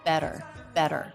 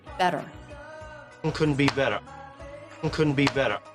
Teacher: some students find it tricky to go from flap T into the schwa R which is the ending of this word better so the tongue bounces against the roof of the mouth then